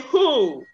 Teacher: the glottal fricative is the sound we have at the initial position of the word who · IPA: /hu:/